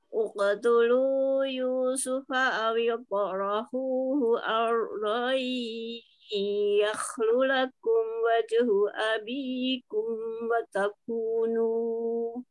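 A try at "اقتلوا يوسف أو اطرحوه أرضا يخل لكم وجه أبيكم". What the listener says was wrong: ya huruf bo-nya tadi kurang itbak ya, kurang lengket, sama pangkalnya lebih dinaikkan lagi um. Awil to rohu hu.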